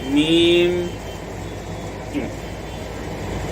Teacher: इसी तरीके पर जहाँ मीम को अदा करेंगे तो दोनों होंठों की खुश्की का हिस्सा यानी जब मीम अदा करेंगे तो दोनों होंठ को मिलाएंगे। जैसे मीम, ये खुश्की है दोनों तरफ, यानी थोड़ा सा होंठ को इस तरह करना पड़ेगा, मीम।